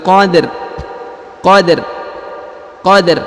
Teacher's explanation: huruf rnya disukunkan ya dengan tipis